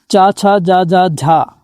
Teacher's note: च, छ, ज झ और लघु ई दीर्घ ई का जो उच्चारण होता है स्टूडेंट वो आपका तालु से होता है।